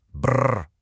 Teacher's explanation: It has this sound called a bilabial trill. You make it by vibrating your lips, kind of like a motorboat sound.